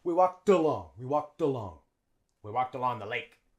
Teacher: notice how the D in walked links onto the schwa in along.